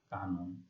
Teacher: মধ্য অ দন্ত ন, তার পূর্বে রয়েছে আ ধ্বনি, সেই জন্য মধ্য অ এর উচ্চারণ ও এর মতো হচ্ছে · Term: সংবৃত উচ্চারণ